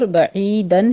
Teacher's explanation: آگے عین کو وسط حلق سے ادا کرتے ہوئے یا مدہ ادا کریں گے